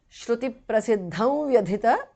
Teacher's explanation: Shruti prasiddham vyadhita because of sandhi. Anuswara changes to the nasal of va.